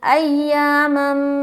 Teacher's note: میم 2 زبر کی تنوین کے بعد میم ہے. ٹھیک ہے، تو یہاں پر میم کو میم سے ملا دیں گے